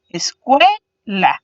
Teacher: Entonces podemos visualizar que cue sería la sílaba que suena más fuerte, por eso está pintada en azul, y las dos restantes serían conocidas como las sílabas átonas.